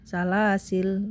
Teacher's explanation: Jadi kalau riwayat Thayyibatun Nasr yang mad jaiznya dibaca 2 harokat, cara membaca salah sila adalah alifnya tidak dibaca saat waqaf, berarti menjadi salah sil.